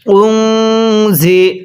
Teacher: এই নুন সাকিনটা গুন্নাহ করে পড়ব। এখানে নুন সাকিনের পরে ঝা ইকফার হরফ আছে, এই জন্য নুন সাকিন গুন্নাহ করে পড়তে হবে।